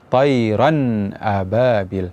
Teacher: depannya ada huruf hamzah yang mana ini merupakan hukumnya adalah izhar maka bunyi Nun pada tanwin dibaca jelas